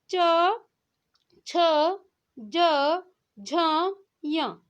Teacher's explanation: जब आप उच्चारण कर रहे होंगे तो आप देख रहे होंगे कि आपकी जो जीभ है वो आपकी तालु को क्या कर रही है, स्पर्श कर रही है। तो यह क्या होगा, तालव्य व्यंजन होगा।